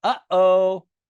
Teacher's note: You can say it's the sound in between the and the O when you say uh-oh. You hear that silence in the middle? · Sometimes it feels kind of like a placeholder for a vowel, and it's totally silent. It's a glottal stop. You can say it's the sound in between the and the O when you say uh-oh.